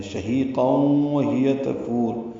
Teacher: تفور میں فا کو لمبا کریں گے اور را پر پڑھیں گے وقفاً. تفور ملانا ہو تب بھی را پر ہی ہے، لیکن پھر فو کو 2 حرکات لمبا کریں گے اور را کو جلدی پڑھیں گے اور ایک ہی سانس میں پھر اگلی آیت بھی پڑھنی ہوگی.